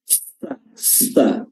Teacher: hams atau udara yang keluar sangat kencang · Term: Sin